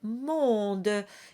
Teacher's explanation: And finally, you have monde, which has on, the O-N combination, where you start with a closed O and you nasalize into on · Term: nasalized vowels